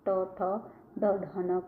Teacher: ट, ठ, ड, ढ, न को जब बोलेंगे तो ऊपर आप बोल के देखो, मूर्धा से स्पर्श होता है।